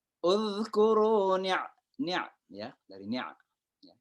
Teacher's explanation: ain, huruf keluar dari tengah tenggorokan